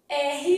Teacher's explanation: P fechei a boca r vibrei a língua parar e o a que eu abri a boca então para